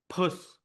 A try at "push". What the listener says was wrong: The P sounded good. We'll work on the SH, but you can do it. Push.